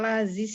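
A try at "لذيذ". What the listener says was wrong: Ya, laziz. Pakai zal.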